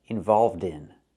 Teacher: Link the D sound with the next word in, din.